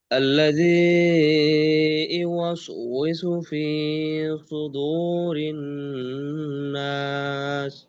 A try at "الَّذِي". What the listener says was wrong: আল্লাজি, একটু তাকাহুকা হয়ে গেল। আল্লাজি, এইভাবে তাসদিদটাকে সুন্দর করে ধরে এইভাবে বলবেন।